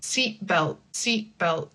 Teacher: You don't really hear the T, but the vowel is shorter · The difference is if you don't have the T, it would be like seat belt, seat belt, seat belt. Like the vowel gets cut short because of the T.